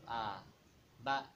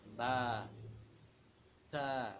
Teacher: lidahnya turun, tidak naik, tidak tebal suaranya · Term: istifal